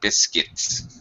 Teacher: you don't need a qua sound just a k sound